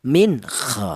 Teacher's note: Karena non mati ini berjumpa dengan huruf kha ini dibaca idhar. Jadi cara bacanya non mati ini dibaca idhar atau dibaca jelas, min kha, seperti itu.